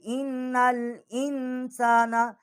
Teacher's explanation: اس کو نون کے ساتھ ہم مشدد کریں گے، اور ہم ہلکا سا یہاں غنہ بھی کریں گے، آگے نون جو ہے اس کو ہم لام کے ساتھ ملائیں گے۔